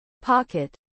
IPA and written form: ˈpɒkɪt (pocket)